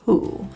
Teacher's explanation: The main issue is the ooh rounding, so feel the rounding, ensure your lips are in a tiny circle.